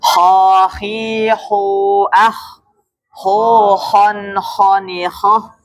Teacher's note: kha di mana, Pak? Atas tenggorokan.